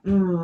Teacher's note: by the time we get to um our lips have come together